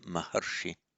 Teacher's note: Remember, it's a short A here. Even though it's a long A, it's shortened.